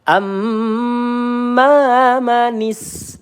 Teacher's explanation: Amma manistagna am ya kita tahan mim bertasdid di sini ghunah musyaddadah tahan dua atau tiga harakat